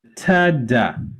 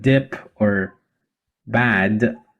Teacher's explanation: So both t as in tip or bat and da as in dip or bad, they are both produced in the same place, which is the alveolar ridge